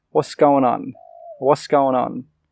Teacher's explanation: And we don't say going, we say goin'. And then we join the goin' and the on together. · When we say this really quickly, we don't say what's, we say was. We don't actually say that T sound. And we don't say going, we say goin'.